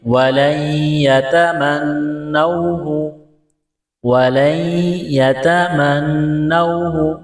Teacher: نون کا یا میں ادغام کریں گے، وَلَن يَتَمَنَّوْهُ، وَلَن يَتَمَنَّوْهُ، نون مشدد پر غنہ کریں گے